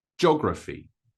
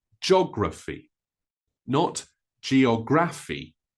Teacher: The pronunciation makes it more like 3 syllables than 4 syllables.